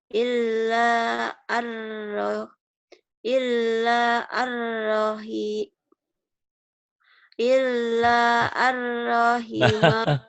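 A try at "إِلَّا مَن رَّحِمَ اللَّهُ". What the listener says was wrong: Bukan ar. Ilaman mar ini. Ilaman, mannya jadi mar. Ilamar rahimahullah.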